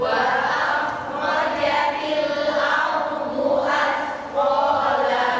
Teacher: Jadi huruf kha sukun dan ra sukunnya enggak diqalqalkan.